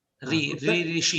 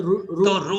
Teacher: उत्तर भारत में री ऋषि है, दक्षिण भारत में अगर कर्नाटक से आप तो रू बोलते हैं, रू बोलते हैं, ऐसा उच्चारण मिलेगा।